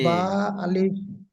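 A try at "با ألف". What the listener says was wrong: বা ক আলিফ টান আছে, টান দেবেন তো ভাইজান। আলিফের টান হয়ে যাচ্ছে। বা আলিফ।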